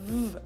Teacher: use the German W sound which is the same as the English V sound